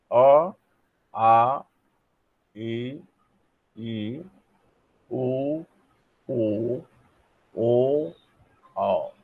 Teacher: जो अंदर से हवा आ रही है, प्राणवायु आ रही है, वो नाक से नहीं निकलती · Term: मौखिक स्वर